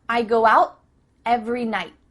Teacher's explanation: tongue is at the top of your mouth you're about to make the T sound but no air goes through so it's just stopped at the top of your mouth